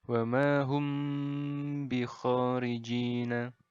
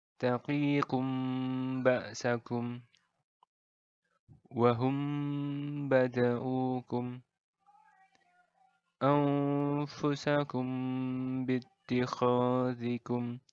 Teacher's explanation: Jadi bagian mim bertemu baknya ini ditahan dulu, didengungkan sepanjang 2 harokat. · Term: ikhfa syafawi